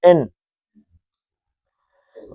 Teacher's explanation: نون کا مخرج کیا ہے؟ تالو کے ساتھ زبان ٹکراتی ہے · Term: اظہار